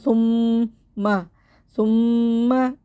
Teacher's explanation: میم مشدد کو غنّے کے ساتھ پڑھیں گے اور سا میں زبان دانتوں سے باہر آئے گی